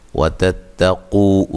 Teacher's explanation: واو مدہ ہے، قاف کو موٹا